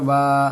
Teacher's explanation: الف مدہ ایک الف کے برابر کھینچیں گے